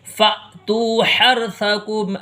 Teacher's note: را ساکن سے پہلے حرف کے اوپر زبر ہے تو را کو پر پڑھیں گے